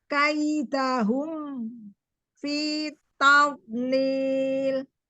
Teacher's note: Setelah monyong di hu, mimnya kembali hum.